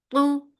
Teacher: Ta is heavy. Ta is the most heaviest letter in Quran, so make sure that you lift your tongue up and paste it on your palate. So the sound should be very heavy.